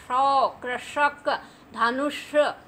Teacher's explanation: ठीक है, शौ, थोड़ा सा जीभ आगे को जाती है और ऊपर वाले जबड़े में जो खुरदुरा स्थान होता है इसके पीछे जो गहरा तालू होता है, यहाँ से जीभ जाती है, इस तालू को टच करती है तो शौ की आवाज़ आती है